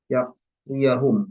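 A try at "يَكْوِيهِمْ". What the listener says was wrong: Yakwihim, nggak ada aneh di sini. Yakwihim. kalau ada annya baru ya kan yakwiyah. Di sini nggak ada an.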